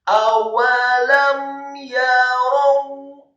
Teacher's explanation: Awalam yarau, kata yarau, ya-nya dibaca tipis fathah satu harokat, kemudian ro-nya dibaca tafkhim tebal fathah satu harokat, kemudian wawunya dibaca sukun. Membaca huruf wawu yang sukun, posisi mulut tertutup dan agak tertutup dan dengan gerakan yang agak cepat.